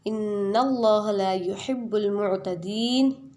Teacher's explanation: مثال کے طور پر اللہ رب العزت نے قرآن پاک میں ارشاد فرمایا ہے ان اللہ لا يحب المعتدین، بے شک اللہ تعالیٰ حد سے بڑھنے والوں کو یعنی زیادتی کرنے والے کو پسند نہیں فرماتا۔ اب یہاں پر لا يحب کے لا کو کھینچ کر پڑھیں گے ایک الف کے برابر